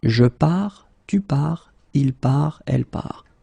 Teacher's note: you get this final S, final T, but then you don't pronounce them